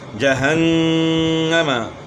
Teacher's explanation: نون مشدد ہے، اس میں غنہ ہوگا